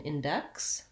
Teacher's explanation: words have different sounds in index the x sound says also a consonant cluster the k and s sounds together